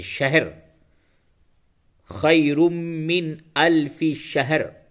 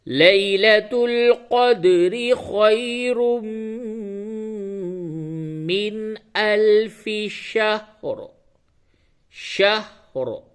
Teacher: اور شہر نہیں بولنا ہے، ہا کے اوپر جزم ادا کرنا ہے، ہا کو ساکن بولنا ہے، ہا کے اوپر زبر بالکل ہی نہ آنے پاوے۔ تو صحیح ادائیگی اس طرح سے پڑھیں گے، لیلۃ القدر خیر من الف شہر، شہر۔